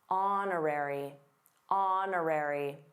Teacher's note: did you notice the silent H in honorary?